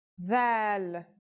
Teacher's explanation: This letter's pronunciation is a voiced sound, the, as in this or that. It's pronounced with the tongue between the upper and the lower teeth.